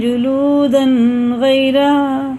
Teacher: یہ اظہار کا قاعدہ ہے کیونکہ تنوین کے بعد غائن آ رہا حرف علقی میں سے